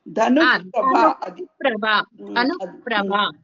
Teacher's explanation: ధనుర్ప్రభ దగ్గర మాత్రం విసర్గ కి ఎఫ్ సౌండ్ వస్తుంది